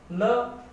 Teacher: जीभ टकरा रही है दांतों से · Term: दंत्य